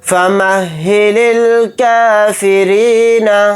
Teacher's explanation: را کو یہاں پر باریک پڑھیں گے کیونکہ را کے نیچے زیر ہے